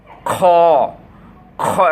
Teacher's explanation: এই কণ্ঠনালীর শেষ ভাগ থেকে খ উচ্চারণ হবে এবং খড়খড়া আওয়াজের সহিত মোটাভাবে খ খ, একটা খড়খড়া আওয়াজ হবে এবং অক্ষরটা হবে মোটাভাবে।